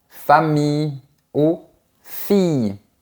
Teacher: C’est comme une lettre I un peu plus longue et on n’entend pas le son des lettres L